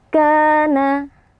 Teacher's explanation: Karena ada alif sebelumnya fathah dibaca panjang dua harakat. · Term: mad thobi'i